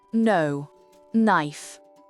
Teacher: Le K est muet devant un N en début de mot.